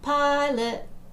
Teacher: you can hear that the pi is the stress part